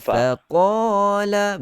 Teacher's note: hati-hati jangan terbawa-bawa huruf fa untuk kita tebalkan sekaligus. Fa nipiskan dulu.